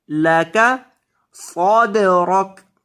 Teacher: صاد کو موٹا کریں گے، دال کو ہلا کر پڑھیں گے